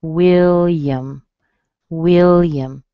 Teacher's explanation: So it sounds like will yum. Okay, you hear a little Y in front of the schwa · will is strong, and then the A on the end, it's a schwa. So it sounds like will yum.